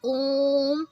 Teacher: जैसे हम कहीं जागरण में जाते हैं तो मैया, जब भी भजन करते हैं तो मैया मतलब काफ़ी लंबा खींच रहा है, तो ये आपका प्लुत स्वर में आएगा। ओम का जब हम उच्चारण करते हैं तो ओम काफ़ी लंबा खींचता है